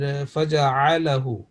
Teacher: voice coming from the middle of throat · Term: Ain